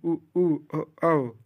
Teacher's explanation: जिन स्वरों के उच्चारण में ओठ वृत्तमुखी गोलाकार होते हैं